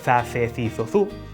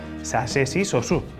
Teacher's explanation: Se és da zona zetacista de Galiza, como a min, lerás za, ce, ci, zo, zu, e se és da zona seseante, entón lerás sa, se, si, so, su. Isto é, a palabra macizo é lida macizo ou masizo.